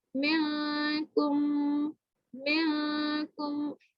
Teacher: آپ نے نون کے مخرج سے آپ نے ٹچ نہیں کرنا، آپ نے پیچھے پیچھے رہنا، لیکن غنہ ہو رہا ہے یہاں پہ، لیکن نون کے مخرج سے ٹچ نہیں ہوگا.